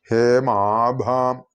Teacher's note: ഭ ചുണ്ടു ചേർത്ത് കണ്ഠം കൊണ്ട് ഉച്ചരിക്കേണ്ട ശബ്ദമാണ്, അക്ഷരമാണ് ഭ. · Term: ലേബിയൽസ്